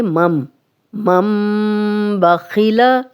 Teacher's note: نون ساکن اگلا حرف با آ گیا تو ہم نون ساکن کو میم میں بدل دیا ہے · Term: اقلاب کا قاعدہ